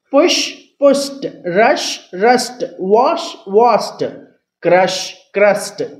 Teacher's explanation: ఇలా ఎస్ఎస్తో ఎండ్ అవుతూ తర్వాత ఈడీ చేర్చామనుకోండి ఆ ఈడీని టాలా చెప్తాం